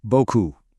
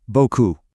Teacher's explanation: that P at the end, totally silent. It's just a leftover from older French.